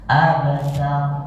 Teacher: Jadi bukan fathah sebenarnya, tapi antara fathah dan sukun pertengahan. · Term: qalqalah